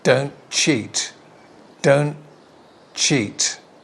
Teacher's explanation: we don't pronounce the final t of don't it's linked to a ch sound here